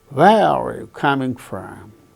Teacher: the falling tone is on where